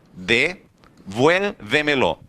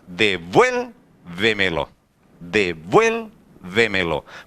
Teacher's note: E quando a gente faz a separação completa, a gente percebe que a palavra ficou devuélvemelo. A maior intensidade de voz não está na última sílaba, não está na penúltima, não está na antepenúltima, está antes da antepenúltima sílaba. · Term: sobre esdrújula